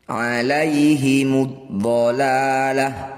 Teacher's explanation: Awalnya dhalalatu, huruf terakhir ini namanya tak marbutoh. Ketika dihentikan dibaca waqaf maka harus diganti bunyinya jadi hak sukun.